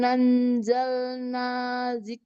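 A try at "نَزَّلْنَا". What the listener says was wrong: Nazzalna ya, itu zai.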